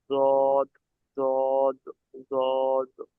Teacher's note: জিভের কিনারা, জিভের সাইড, আর উপরের মাড়ির দাঁতের গোড়া। উপরের যে দাঁত আছে, মাড়ি, মাড়ি এবং দাঁতের গোড়ার সাথে মিলিত হয়ে উচ্চারিত হবে · জিভের কিনারা তার বরাবর উপরের মাড়ির দাঁতের গোড়ার সাথে লাগিয়ে উচ্চারিত হয়